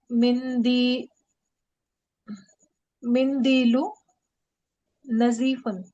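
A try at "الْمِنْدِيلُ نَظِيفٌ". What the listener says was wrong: नजीफुन, ठीक है ना।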